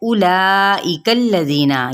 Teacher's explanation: वाव silent है, तो हमने हमज़ा की पेश को बढ़ाना नहीं है